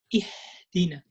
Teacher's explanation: And also weakening the ha because you exaggerate with the with parting the vocal cords. You open the vocal cords totally, so you weaken the sound of the ha.